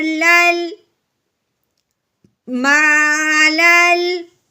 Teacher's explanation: لام کو لام کے ساتھ ملانا ہے بغیر الف پڑھے